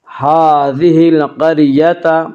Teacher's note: القریۃ کی را کو پر پڑھیں گے